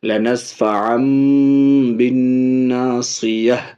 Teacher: تنوین کے نون کو میم سے بدل رہے ہیں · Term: اقلاب